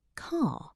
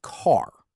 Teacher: British English tends to be non-rhotic, meaning we don't pronounce the R at the end of words.